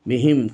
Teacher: মিম সাকিনের পর ইয়া এসেছে, এই জন্য এটা মিম সাকিনের এজহার হবে, বিহিম, কোনো গুণনা করা যাবে না।